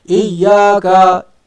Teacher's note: Pasal iyyaka tak ada huruf mim, tak ada huruf nun, yang mana tidak memerlukan rongga hidung di dalam menyebut huruf tu.